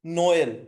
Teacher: নোয়েল বা Christmas, Christmas বা বড়দিন, এটা হচ্ছে আপনার হচ্ছে ফ্রেঞ্চে ই এর উপর দেখেন উচ্চারণে তেমন খুব একটা পরিবর্তন হয় নাই, জাস্ট ই এর উচ্চারণটা এ এর মতো হয়ে গেছে